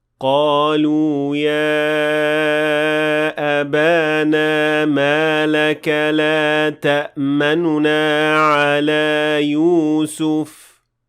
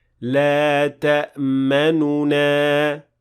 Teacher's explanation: To perform ar-rawm on this ayah, you will pronounce the noon with dhamma very lightly and quickly move on to the next noon, which is essentially applying ikhtilas, which I explained before in this lesson.